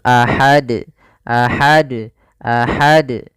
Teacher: harus dipantulkan karena dia termasuk huruf Qalqalah kalau kita wakaf maka harus mantul